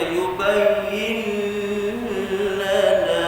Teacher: Tuan-tuan lihat nun itu asalnya ada tanda mati, tapi dihilangkan tanda mati itu menunjukkan nun tidak boleh dijelaskan bunyi dia, tak boleh diizharkan sebab lepas dia huruf lam, salah satu dari huruf idgham masuk dalam lam itu idgham bila gunnah tanpa dengung, masuk dalam lam tak dengung.